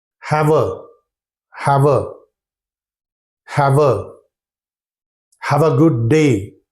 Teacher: they drop the last sound produced by the last letter of the word have. They drop it and then they link the sound of the second word together with the first word.